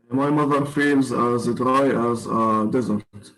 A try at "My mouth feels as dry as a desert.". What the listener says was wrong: My mouth feels, not my mother. Read